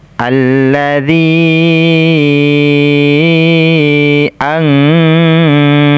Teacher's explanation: Ini namanya mad jaiz munfasil karena alif berada di kata yang lain. Mat ketemu alif tetapi alifnya berada di kata yang lain. Ini namanya mad jaiz munfasil. Panjangnya 4 sampai 5 harokat.